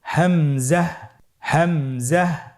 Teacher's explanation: হামজা হরফটি উচ্চারণের স্থান হা এর মতই। হা হরফটি যেখান থেকে আমরা উচ্চারণ করেছি একই জায়গা থেকে আমরা হামজা হরফটি উচ্চারণ করব হলকের শুরু হতে। · পরবর্তী হরফটির নাম হামজা। হামজা হরফটি উচ্চারণের ক্ষেত্রে বারিক করে উচ্চারণ করতে হবে এবং এখানে টেনে পড়া যাবে না। দ্রুত পড়তে হবে।